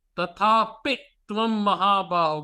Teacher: Yes, there's pressure on the pi.